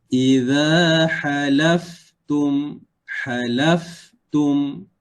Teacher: Fa mati. Kita keluarkan angin.